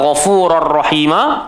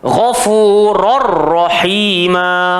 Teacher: tanwin bertemu ra jadi idgham bila gunnah, so tak boleh dengung